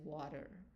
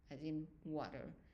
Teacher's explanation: And this one is pronounced when it's a consonant is pronounced as a W, not V, not as in Victor, but W as water